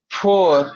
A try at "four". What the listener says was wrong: No, you said po. It's fur.